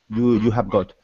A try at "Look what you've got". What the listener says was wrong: Look what you've got. Don't be shy to pronounce the contraction, right? It sounds like You've got.